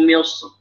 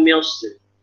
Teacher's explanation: bisa dengan dua cara, bisa dengan tafkhim, bisa dengan tipis.